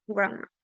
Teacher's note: In grandma, the sound da also disappears, and we say grandma.